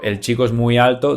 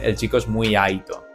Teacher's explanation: En muchas palabras, la letra L o R se pronuncia como una I. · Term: hablan con la I